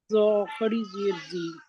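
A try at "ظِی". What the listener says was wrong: ذا کھڑی زیر زی، موٹا ہے. اردو والا زوئے ہے، لیکن عربی میں زوئے نہیں، اس کو کہتے ہیں ذا، کہتے ہیں ذا. تو ذا.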